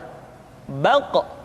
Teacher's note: Diucapkan dengan suara yang tebal dan dalam posisi sukun, maka terdengar pantulan suara.